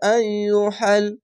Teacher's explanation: মাদ্দা আরজি তিন আলিফ টেনে পড়বেন